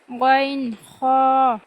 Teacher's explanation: তিন নাম্বার মাখরাজ হলকের শেষ হইতে গাইন খ